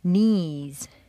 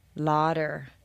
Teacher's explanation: filling the whole mouth touching the insides of all the teeth leaving no room for the air to escape except by the nose